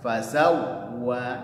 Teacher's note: Fasawwa, wawunya bertasydid. Perhatikan harus ada nabrah karena dia bertasydid. Fasawwa, tapi dia juga punya sifat rokhawah, jangan sampai tertahan seperti ini.